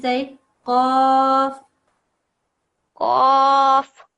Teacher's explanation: this is the qaf. It's a very thick letter. It comes from deep in your throat. There's a difference between qaf and kaf.